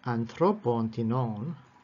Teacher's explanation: If that second syllable of the enclitic is long, as in this example, anthropon tinon, of some people, genitive here, genitive plural, so anthropon accents upon the middle omega, and then tinon accents on the second syllable, also an omega, it accents as a circumflex.